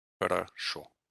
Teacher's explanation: It's the stress in the word is on the ending O. But these two O's, the first two syllables, are unstressed. So they undergo what's called vowel reduction · Only the final O is fully pronounced as an O, because that's the one that's stressed.